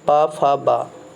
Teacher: माँ में आपका क्या हो रहा है? ओठ में टच हो रहा है